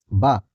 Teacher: ओष्ठ है अल्प प्राण घोष व्यंजन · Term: ओष्ठ अल्प प्राण घोष